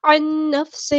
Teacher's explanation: نون ساکن کے بعد نون آیا تو یہاں پہ ادغام ہوگا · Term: ادغام مع الغنہ